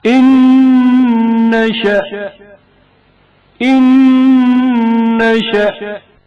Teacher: نون ساکن کا نون متحرک میں ادغام ہونا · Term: ادغام متماثلین